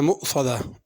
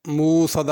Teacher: مؤصدہ میں حمزہ پڑھنا، مؤصدہ موصدہ کر کے واو کر کے نہیں پڑھنا، صاد کو پر کرنا۔